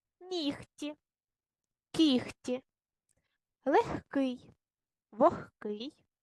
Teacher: паузу читалочка дізналась що в українській мові є слова у яких дзвінки приголосні перед глухими вимовляються як парні глухі